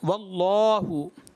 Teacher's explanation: اللہ کے لام سے پہلے اگر زبر پیش ہوگا تو اس میں جلالت ہے. بہت زیادہ پر پڑھیں گے موٹا پڑھیں گے